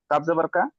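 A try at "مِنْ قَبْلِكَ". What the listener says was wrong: না, না, এই কাবজ আবার কাটা, কাপটা সাকিন হবে আর সাকিন যুক্ত লাম কাবজের লিক, লামের সাথে যুক্ত হবে।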